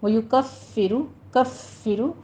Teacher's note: فا پہ تشدید ہے، سختی کیجیے، اور را مفخم پڑھی جائے گی